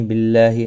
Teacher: اللہ کا لام زیر کی وجہ سے باریک پڑھا جائے گا، اس کے اوپر کھڑی زبر بھی ہے، ایک الف کی مقدار کے برابر کھینچ کر پڑھیں گے۔